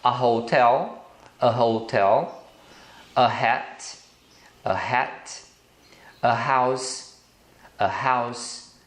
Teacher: em todas essas palavras o h é pronunciado com som de R